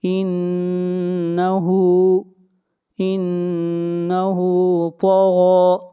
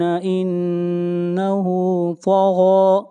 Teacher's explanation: طا اور غین دونوں حروف مستعلیہ ہیں، دونوں کو موٹا پڑھا جائے گا